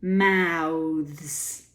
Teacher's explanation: tricky but unsurprising but mouths there's something interesting going on there the th becomes voiced slightly voiced when you make it a plural now with this and you have a voiced Z as well